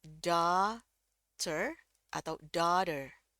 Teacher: Jadi mulutnya kebuka lebar, rahangnya kebuka lebar, antara mengucapkan A dengan O tapi cenderung ke A. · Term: A tebal